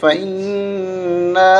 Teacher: غنہ کریں گے اور چھوٹی مد کی وجہ سے 3 الف تک ہم کھینچیں گے